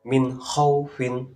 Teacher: nun sukun bertemu kho. Cara membacanya juga jelas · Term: hukum bacaan idhar